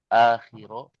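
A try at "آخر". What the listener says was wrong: misalan akhor, bukan akhir akhor ya.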